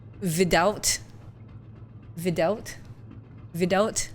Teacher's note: you need to change the w sounds to v and to pronounce the th sounds wrong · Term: russian accent